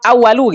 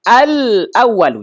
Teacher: Enggak dibaca awalu gitu, enggak. Tapi al-awwalu, jelas lam sukunnya. · Ketika lam sukun, ini lam sukunnya nih, bertemu dengan hamzah, maka lamnya kedengaran. Al-awwalu. Enggak dibaca awalu gitu, enggak. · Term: izhar